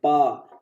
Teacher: पा में देखो ओठ टच हो रहे हैं, पा, तो पा वर्ग ओठ से होता है।